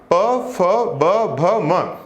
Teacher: प वर्ग का जो उच्चारण होगा वो होने वाला है ओठ से, होठ से, इसको बोला जाता है ओष्ठ।